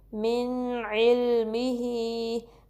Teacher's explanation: throat letters में से है, तो यहाँ इजहार होगा, यानी कि हम नून साकिन को क्लियरली पढ़ेंगे, नाक में नहीं छुपाएंगे और ना ही इस पर ज़्यादा टाइम देंगे, इस तरीके से